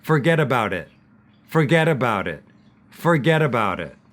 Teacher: you can see that the T on the end of it, we don't pronounce.